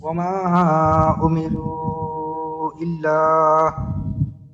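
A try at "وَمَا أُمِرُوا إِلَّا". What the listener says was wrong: টান ঠিক আছে, কিন্তু আলিফের পরিমাণটা আরেকটু লম্বা করতে হবে। আলিফের পরিমাণটা যেন আরেকটু লম্বা হয়।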